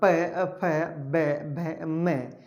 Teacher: प वर्ग, तो हमारा प, फ, ब, भ, म जो हमारे होठों से उच्चारित होते हैं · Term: ओष्ठ